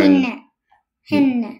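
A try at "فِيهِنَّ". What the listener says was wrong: Hinna. Very good.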